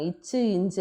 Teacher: அடியை தொடுறது அப்ப இக்கு இங்கு இச் இஞ்சு அப்படின்றாங்க இச் இஞ்சு அப்படின்னு நாவினுடைய இடைப்பகுதி நடு அன்னத்தினுடைய இடைப்பகுதியை பொருந்துறதுனால பிறக்கக்கூடியது